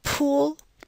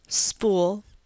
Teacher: this is aspiration and we transcribe it using a superscript h the word Spool in contrast does not have this aspiration following the P so we do not put the superscript H in transcription so